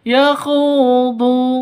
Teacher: Khu panjang 2 ketukan karena ada wawu mati diawali dengan dhammah, mad asli atau mad tabi'i.